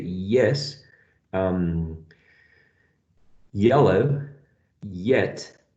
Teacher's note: when you're saying yes, yes, the front part of your tongue is touching the hard palate. So we should consider it a palatal sound.